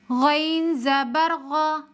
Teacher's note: غین حروف مستعلیہ میں سے ہے، موٹا کر کے پڑھیں گے